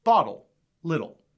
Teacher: the american accent rounds those sounds off to the point that they sound not like the letter t but rather the letter d bottle little but in our uk accents that rounded t doesn't